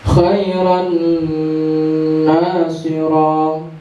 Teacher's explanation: Masukkan huruf pertama kepada huruf kedua, ya, bi gunnah dengan berdengung. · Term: Idgham bi gunnah